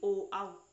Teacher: ओ आओ का उच्चारण स्थान कंठ और ओष्ठ होता है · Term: कंठोष्टम